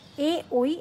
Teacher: একটু লিখি কণ্ঠ ও তালু আরেকটা হচ্ছে কণ্ঠ ওষ্ঠ তাহলে দেখো আমাদের কণ্ঠ এবং তালু থেকে উচ্চারিত হবে হচ্ছে এ ঐ